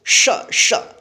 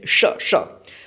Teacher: इसका जो उच्चारण होता है जीभ और तालु की मदद से, यानी जीभ जो है ना तालु के ऊपर जाता है और उधर से हवा जो है ना घर्षण बनकर निकलता है श श, तालव्य श, इसका उच्चारण श होता है, ठीक है, श श।